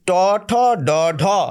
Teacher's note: জীব ওই মূর্ধায় গিয়ে যে যে বর্ণ উচ্চারণ করে তাদেরকে বলা হয় মূর্ধন্য বর্ণ